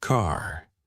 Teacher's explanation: American accent often uses a strong R sound.